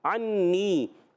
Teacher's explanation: ऐन अदा होता है हलक के दरमियान वाले हिस्से से